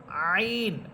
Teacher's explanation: এরপরে হরফ আইন, কণ্ঠনালীর মধ্যখান থেকে